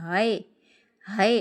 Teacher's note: अक्सा हलक से हमजा और हा यह दो हर्फ निकलते हैं।